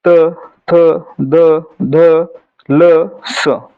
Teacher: उच्चार करताना जिभेचा स्पर्श दातांना होतो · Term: दंत्य वर्ण